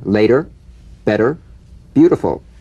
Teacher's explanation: the medial T becomes a soft D all right not a complete D but it goes toward a d